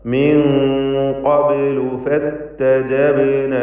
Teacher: ഫസ്തജബ്ന ബാഇന്റെ സുക്കൂൻ ഖൽഖല സുഗ്റ നൽകി ശബ്ദം ചലിപ്പിക്കണം.